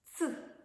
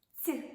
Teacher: звук ц твердий приголосний звук ць М'який приголосний